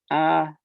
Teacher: one of the tones in in mandarin is ah you know like a high pure flat tone